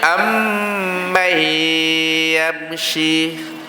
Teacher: Kerana apa dengung? Kerana mim itu makhraj hidung. Mim yang mati makhraj hidung, dan nun yang mati juga makhraj hidung.